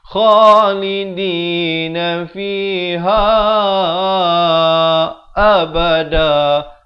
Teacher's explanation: kha makhrajnya di hujung kerongkong